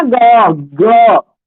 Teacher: ग बोलेंगे ना तो कंपन होता है ना